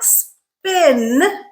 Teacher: if they are the second sound in a consonant cluster they are not aspirated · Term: no aspiration